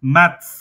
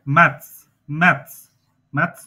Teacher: উচ্চারণ হবে ত স, মানে ত এর সাথে ধাক্কা খেয়ে ছ উচ্চারণ হবে